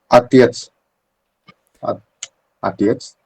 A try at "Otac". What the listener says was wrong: I think we can, um, we can hear it in your pronunciation. We can hear the Russian like pronunciation. We just don't have that. Don't know how to explain it, but we don't have that. Softening of the, yeah.